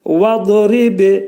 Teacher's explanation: Dad hərfini dilimiz 2 dişin arasına girərək qalın şəkildə deyirik.